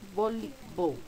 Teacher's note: La que se pronuncia más fuerte es li. Por tanto, es nuestra sílaba tónica.